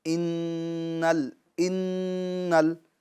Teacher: تو جب اس کو ہم پڑھیں گے تو گنہ کریں گے اور 1 الف کی مقدار ناک میں آواز لے جائیں گے، ٹھیک ہے، ٹھہرا کر رکھیں گے آواز کو